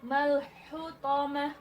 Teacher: Ta marbutah lagi terakhirnya. Berarti ketika wakaf berubah jadi ha bunyinya.